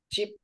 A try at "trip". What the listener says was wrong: Bật hơi ra chút nữa nè. Tr. Tr. Tức là hơi ít thôi, không có nhiều. Cái nhiều á, cái hơi nhiều là nó rơi vào âm này nè. Chỗ này là mình cong lưỡi nha. Trip.